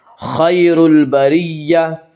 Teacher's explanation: خیر البریہ، یا مدہ یا لین وہ یا جو ساکن ہو اور اس سے پہلے زبر ہو، یا لین کو نرم آواز کے ساتھ جلدی پڑھیں گے۔ خیر البریہ، بریہ کی را کو باریک پڑھا جائے گا، اس کا قاعدہ کہ را کے اوپر زبر پیش آئے تو را کو پر پڑھا جائے گا، را کے نیچے زیر آئے تو را کو باریک پڑھا جائے گا، یا را کے نیچے زیر اس سے را کو باریک پڑھیں گے۔